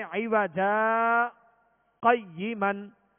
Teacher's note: عوجا جیم پر 2 زبر کی تنوین ہے تو اس کو الف سے بدل کر آواز روک کر سانس لیے بغیر آگے پڑھیں گے اور اس طرح سکتہ کریں گے، جیسے عوجا قیمن، یوں سکتہ کریں گے.